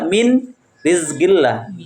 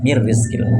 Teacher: Nun mati ketemu ro nunnya enggak lagi terbaca enggak boleh kita baca min rizqillah tapi masuk di huruf ro ditumkan mir langsung ee menjadi huruf yang bertasydid tulisannya min rizqillah tapi dimasukkan di huruf setelahnya menjadi mir rizqillah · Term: idgam kamil, idgham kamil